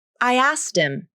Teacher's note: Both “asked” and “him” can be reduced, and once they reduce, they link up much easier than they did before.